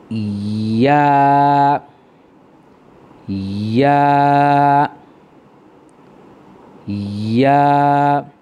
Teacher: জিহ্বাটার মধ্যখানটা উপরের তালুর সাথে একটু ঘষা খেয়ে আসবে।